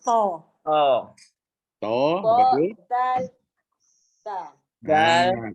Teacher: makhraj ke-10 yang mana masing-masing ni ada tiga huruf okey pertama hujung lidah sentuh pangkal gigi atas